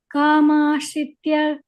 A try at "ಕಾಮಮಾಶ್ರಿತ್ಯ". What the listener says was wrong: ಕಾಮ ಎರಡು ಮಾ ಇದೆ ನೋಡಿ